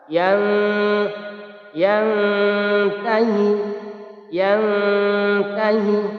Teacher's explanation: Bacanya harus samar dan didengungkan 2 harokat. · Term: ikhfa hakiki